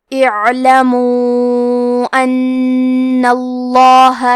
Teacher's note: یہ مد جائز منفصل ہے، تو ہم اپنی آواز 2 سے 4 مد کے برابر لمبی کریں گے